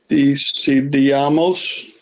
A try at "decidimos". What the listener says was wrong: Careful, you put an A in there. Decidimos. Let's look at how I'm doing this. Decidimos. Decidimos.